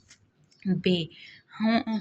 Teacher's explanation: ہونٹ آپ کے بندش کا سامنا کریں گے، یعنی ہونٹوں پہ دباؤ آئے گا، پھر انہیں آپ چھوڑیں گے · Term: بندشیہ مسمتیں